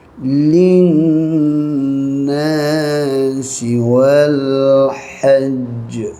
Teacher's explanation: Linna dengung je wajibul gunnah ni. Nun sabdu dengung panjang. Na panjang dua rakaat mak asli, wal wa terambil lam mati, wal lam qamariyah.